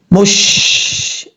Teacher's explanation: شین پر جب آپ پڑھیں تو شین میں آواز پھیلنی چاہیے